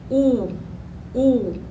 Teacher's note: os lábios ficam arredondados